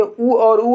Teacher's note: ऊ और ऊ होठों से निकलती है ध्वनि